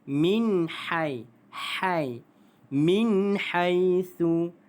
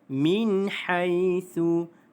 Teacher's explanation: huruf nun mati bertemu dengan huruf ha, maka dia adalah izhar halqi, dibaca tanpa dengun jelas.